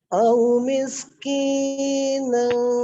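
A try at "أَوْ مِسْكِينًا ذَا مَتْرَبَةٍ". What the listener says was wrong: Nah, terlalu panjang tuh. Z-nya juga terlalu panjang.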